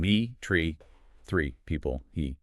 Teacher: My mouth is wide, it's tense, it's almost like a forced smile. Exactly. It's a long, high-tension sound.